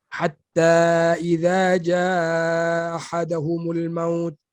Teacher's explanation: Mana hamzahnya hilang, ha pun hilang. Jadi hilang dalam sebutan. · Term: idgham